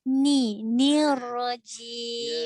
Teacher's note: bila nak sebut ra bersabdu, nun tu jangan dikorbankan. Maksudnya dikorbankan, nun berada tetap baris bawah.